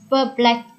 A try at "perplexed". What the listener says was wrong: Perplexed. again, that has a T sound at the end. Perplexed.